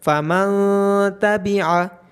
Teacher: اس کے بعد ہے فَمَن تَبِعَ، یہاں نون ساکن کے بعد تا ہے جو کہ حروف اخفا میں سے ہے، تو یہاں پہ نون ساکن کی آواز کو ناک میں چھپایا جائے گا